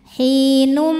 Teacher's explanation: Jadi kita tidak membunyikan lagi hinun, melainkan hinum. Jadi bunyinya M sambil kita tahan bunyi M-nya. Hinum, dengung. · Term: idgham bi gunnah